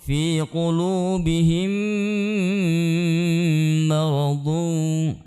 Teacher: Mim sukun bertemu dengan mim, maka kita tahan bacaannya, disebut dengan idgham mimi, maka kita baca dengan mendengung.